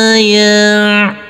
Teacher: Huruf lam yang berkasrah tanwin bertemu dengan huruf ain, maka tanwinnya harus kita baca dengan terang atau jelas. Huruf ain yang bersukun ini harus ada aliran, berbeda dengan huruf hamzah.